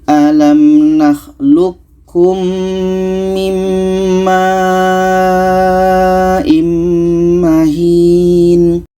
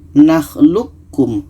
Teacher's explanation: Maka qa ini yang asalnya qalqalah tidak jadi. Kita masukkan ke ka. Kita idghamkan ke ka.